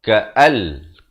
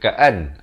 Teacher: Di sini nun mati bertemu lam, idgham bila gunnah. Ka'al, bukan ka'an.